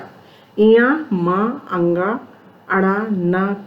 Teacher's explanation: त्रिमंगणानाम नासिका च। इया, म, अंगा, अड़ा, न का उच्चारण स्थान नासिका भी है।